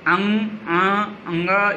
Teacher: जब इनका उच्चारण करते हैं तो नाक से वायु निकलती है, इसलिए ये नासिक वर्ग में आते हैं और इनका उच्चारण स्थान नासिका है।